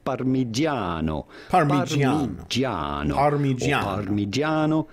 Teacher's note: You do want to stress on the second to last syllable, on the second A